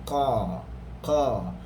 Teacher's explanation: Contoh huruf qaf, qa, hanya belakang lidah saja yang naik, tetapi depannya masih lagi turun, ada ruang udara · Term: infitah